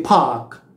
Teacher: you have to say park with the aspiration